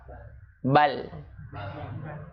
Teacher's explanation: ini ada celah ketika ujung lidah itu dia menyentuh gusi, itu sisinya itu kebuka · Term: at-tawasut